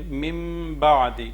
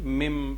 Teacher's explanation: نون ساکن کے بعد با ہے تو نون کی آواز کو میم میں بدل دیں گے، یہاں پہ اقلاب کریں گے۔